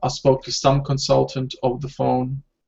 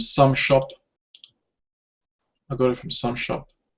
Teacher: Again, we stress some.